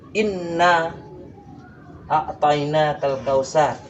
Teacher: Inna itu termasuk karena alif bertemu dengan nun yang bertasydid, jadi suaranya didengungkan. Dengungnya itu dari hidung.